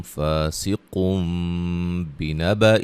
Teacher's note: نون تنوین کا اقلاب ہے، نون تنوین کے جو نون ہے اس کو میم سے بدلیں گے